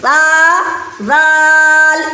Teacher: سا ایک ایک الف کر کے کھینچ کے بولیں گے. سا زال، یہ زال کو تھوڑا زیادہ کھینچنا ہے، 3 الف 4 الف کے برابر کھینچنا ہے